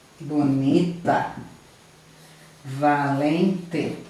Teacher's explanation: a sílaba tônica, ela é a segunda de trás para frente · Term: paroxítona